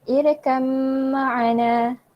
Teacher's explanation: Dia tak bunyikan langsung ba tu. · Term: idgham kamil